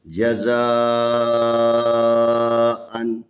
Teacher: یہ الف کے اوپر مد ہے، یہ بڑی مد ہے، اور اس بڑی مد کو 4 الف کے برابر، بعض لوگ کہتے ہیں 5 الف کے برابر کھینچنا ہے